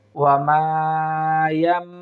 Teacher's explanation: নুন সাকিনের পরিবর্তে ছোট্ট মিমে সাকিন দিয়ে আমরা পড়ার চেষ্টা করব